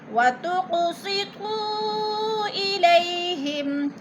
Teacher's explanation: وَتُقْسِطُوا إِلَيْهِمْ، تُق قاف پہ قلقلہ ہے، قاف ساکن ہے اور حروف قلقلہ میں سے ہے تو اس کو ہلا کر پڑھیں گے یعنی قلقلہ کریں گے۔